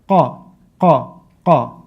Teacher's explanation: You're supposed to bring the back part of your tongue to touch the soft palate, and then qa, okay?